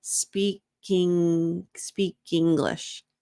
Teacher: notice we have another connected speech opportunity. Speak, consonant sound, English, vowel sound, speak English.